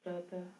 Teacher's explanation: इसका उच्चारण ह की तरह होता है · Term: विसर्ग